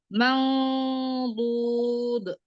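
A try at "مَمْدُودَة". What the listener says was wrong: naikkan lagi pangkal lidahnya naikkan.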